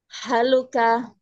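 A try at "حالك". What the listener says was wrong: Ha panjang. Haluka.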